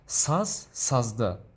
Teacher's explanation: Because the last consonant z is voiced, so we take d, because d is also voiced consonant with voiced d.